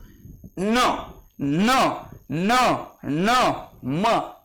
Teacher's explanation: ज्या वर्णाचा उच्चार नासिकेद्वारे म्हणजे नाकाद्वारे करतो त्यांना अनुनासिक म्हणतात.